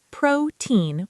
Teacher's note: It's pronounced protein with the stress on the first syllable.